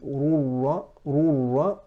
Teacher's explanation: there is no غنة coming from the nasal cavity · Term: idgham with no ghunnah